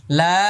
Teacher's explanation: এবার এটা লাম, শেষে মিম আসছে, ঠোঁট বন্ধ হয়ে যাবে